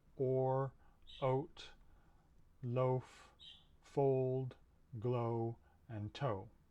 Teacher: this sound represents a mid back rounded vowel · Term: o sound